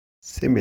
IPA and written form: ˈsɪmɪli (simile)